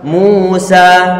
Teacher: Musa berarti suara dhammah, suara u dilipat gandakan menjadi 2. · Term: huruf mad